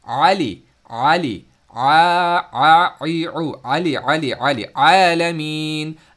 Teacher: But in Ain, ہم کیا کرتے ہیں، آئین کو پڑھتے وقت آئین کو مڈل تھروٹ سے نکالتے ہیں، لیکن آواز گھومتی ہوئی اور سرکولیٹ کرتی ہوئی آواز باہر آتی ہے